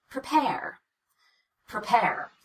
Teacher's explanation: For now, just imitate pr and get through it as quickly as you can so that you can get to the second syllable that gets all the stress and all the vowel and all the change in pitch · we cut the vowel and use what's called the unstressed vowel, or the schwa, which again, we'll learn more about that in another lesson.